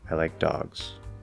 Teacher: It's a very firm, complete fall, usually falls all the way off the cliff, feels very solid. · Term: simple fall